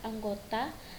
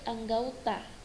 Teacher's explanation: di mana bunyi o-nya pada kata anggota diubah menjadi bunyi au. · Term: diftongisasi